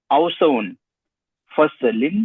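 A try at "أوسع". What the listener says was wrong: हाजा औसाउन, देखिए औसाउन आप तनवीन पढ़ रहे हैं और इसमें तफजील पे कभी भी तनवीन नहीं आती है। हाजा औसाउ फसलिन फिल कुल्लियत, है ना, सही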